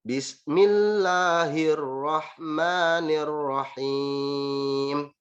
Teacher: Jadi himnya dibaca pendek, padahal tidak seperti itu, dia harus dipanjangkan. Jadi Bismillahirrahmanirrahim, dipanjangkan di ujungnya.